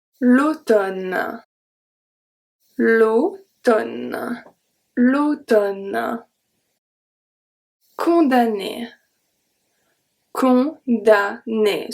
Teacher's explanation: We've seen this one as well when mn is going to be pronounced n.